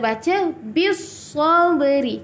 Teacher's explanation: Okey, ini adalah alif lam syamsiah. Bila alif lam syamsiah, kita tak jelaskan huruf lam. Kita terus masuk ke huruf yang ketiga. Kalau dekat kalimah as-sabri ini, huruf sad adalah huruf yang ketiga.